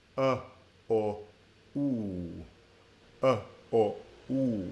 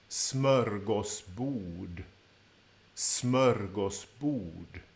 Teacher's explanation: you're rounding your lips more and more as you go through the word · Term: lip rounding